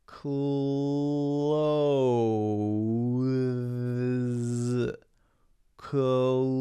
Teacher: my tongue goes out between my teeth and then comes back